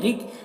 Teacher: रिक रॉ को बारिक पढ़ेंगे